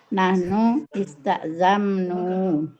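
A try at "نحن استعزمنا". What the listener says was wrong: Istazamna panjang.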